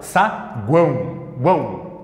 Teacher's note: tenho duas semivogais uma de cada lado e no meio Eu tenho o meu a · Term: tritongo nasal